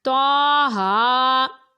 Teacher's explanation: تو اور ہا دونوں کے اوپر کھڑا زبر ہے تو یہ الف مدہ کے قائم مقام ہے، اس لیے اس کو ایک الف یعنی 2 حرکات کے برابر ہی کھینچ کر پڑھنا ہے